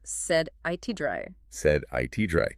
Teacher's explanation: And physically, what's happening is your tongue just barely taps the ridge behind your upper teeth. It doesn't build up that strong pressure you need for a hard T. That speed and minimal contact is what turns it into a D. · Basically, if a letter T appears between 2 vowel sounds, or sounds that kind of act like vowels, like R or L, it almost always softens. It becomes a quick, light D sound. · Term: flap T